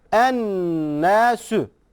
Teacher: nunu biraz tutarak genimizden gizleyerek yapıyoruz